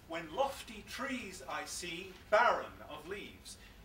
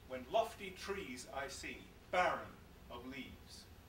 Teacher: the fact that there's a stressed syllable where a weak one should normally be helps the shock value of that particular word